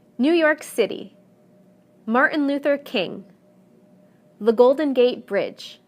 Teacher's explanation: whether the proper noun is 2 3 or even 4 words the stress will always fall in the last segment